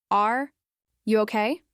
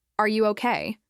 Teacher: with a rising tone at the end, it sounds like real concern